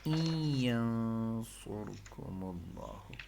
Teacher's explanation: Idgham with ghunna. Means idgham and including nasal sound